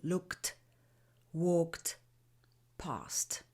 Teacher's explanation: When we have verbs ending in a voiceless sound like k or s, we pronounce the ending t